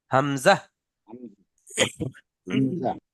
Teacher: হামজাটা যখন আমরা পড়বো একটুও টান হবে না। হামজা তাড়াতাড়ি পড়তে হবে, কারণ এর নিচে চিকে চিহ্ন দেওয়া আছে, অর্থাৎ একটুও টান হবে না।